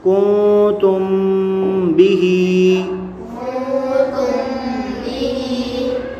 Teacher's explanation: میم ساکن کے بعد حرف با آ رہا ہے تو یہاں اخفاء شفوی ہوگا، یعنی غنہ کر کے پڑھیں گے۔